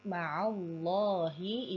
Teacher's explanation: ini adalah lafaz Allah lamnya dibaca tebal karena sebelumnya ini ada huruf berharakat fathah